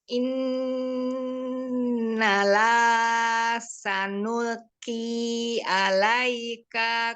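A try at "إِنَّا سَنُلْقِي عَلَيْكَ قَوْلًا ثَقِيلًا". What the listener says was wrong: Nggak ada lanya. Inna sanulqi. Nggak ada innalah. Ya, inna sanulqi alaika qawlan thaqila.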